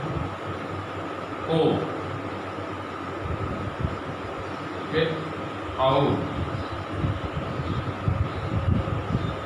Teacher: इन दोनों का उच्चारण स्थल कंठ और ओष्ठ होते हैं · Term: कंठोष्ठम